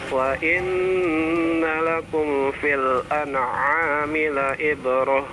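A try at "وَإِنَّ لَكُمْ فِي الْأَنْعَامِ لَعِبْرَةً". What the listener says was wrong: Ibrah pakai ain ya. Jangan pakai hamzah.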